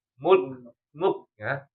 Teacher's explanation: KF itu dia termasuk syiddah. Jadi kita melafalkan siddanya dulu baru hamsnya. Mulk mulknya itu hams. · Nah, mulk. Jadi mul ketika kita mengucapkan huruf kaf itu katahan dulu baru hamz keluarin